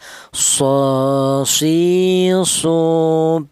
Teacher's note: Huruf sod ini keluarnya huruf berasal dari ujung lidah menyentuh pangkal gigi seri bawah sama dengan huruf sin ya.